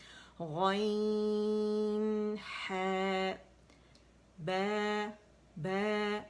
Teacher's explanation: ہا کے لیے زبان کی جڑ کو نیچے دبائیں گے اور پیچھے سے ہوا آواز جو لے کر آتی ہے فرکشن کے ساتھ ہا کو نکالے گی، موڑ سے ادا کرے گی وسط الحلق سے.